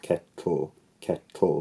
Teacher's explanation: For example, in some pronunciations of the word kettle, kettle, the l acts as the nucleus of the second syllable, kettle. Kettle, so there's no actual vowel there in some pronunciations. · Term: sonorant consonant